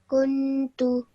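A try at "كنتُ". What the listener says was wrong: kuntu. Okay, don't spend too long on the noon sound. Kuntu.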